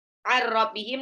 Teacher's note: Innahum, nunnya tasjid, ar-rabbihim nun sukun ketemu ra, idgham bila gunah langsung lebur aja nggak usah ditahan.